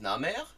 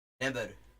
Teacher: See, there's a common phonetic shift you see in language families where an M can become a B, because if you notice when you form an and you form a b. In both cases, there is a bilabial thing going on, and it's just a question of what you do once your lips come together, m or b.